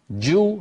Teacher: جو هذه مضمومة تخرج بالتباعد ويصاحبها انضمام